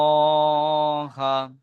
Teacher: >> জি ভাই ইন্নাল্লাহা হামজার নিচে জের আছে জেরটি হলো হারাকাত হারাকাতকে টান না দিয়ে তাড়াতাড়ি পড়তে হয় নুনের উপরে তাজদিদ আছে তাজদিদলা হরুফ এই নুন তাজদিদকে নুনের উপরে তাজদিদ আছে নুন তাজদিদকে এক আলিফ পরিমাণ গুন্না করে পড়তে হয় · আল্লাহু শব্দের লাম মুশাদ্দাদের আগে যাবার এসেছে। তাই আল্লাহু শব্দের লামকে পুর অর্থাৎ ল পড়তে হয়।